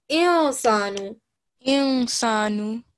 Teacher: I'm hiding the noon. I'm giving a sort of a nasal sound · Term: noon sakin